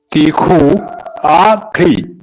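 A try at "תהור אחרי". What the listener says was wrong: തിഹു അല്ല, തിഹൂർ. ലാസ്റ്റ് തിഹു അല്ല, തിഹൂർ. ഇർ വരണം, ലാസ്റ്റ് ഇർ എന്നുള്ള ശബ്ദം വരണം.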